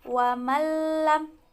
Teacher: idgham bilagunnah tidak ada dengungnya hurufnya ada dua yaitu lam dan rok